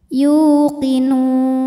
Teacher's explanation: Mad Thobi'i dahohiri sebab ada wau sukun didahului harakat dhamah maka huruf ya ini kita panjangkan dua harakat